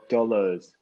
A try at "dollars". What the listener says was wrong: And you see there's still some R. You just go like leave R behind.